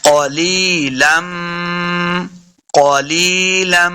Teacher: لام کو میم کے سامنے لانا ہے، میم مشدد ہے، غنہ بھی کرنا ہے